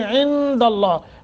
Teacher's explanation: عند اللہ نون ساکن کے بعد دال حروف اخفاء میں سے ہے، یہاں اخفاء کریں گے، لفظ اللہ کو منہ بھر کر پڑھیں گے۔